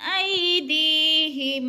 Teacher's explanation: آئی پہ یالین ہے، یالین کو لمبا بھی نہیں کریں گے، جھٹکا بھی نہیں دیں گے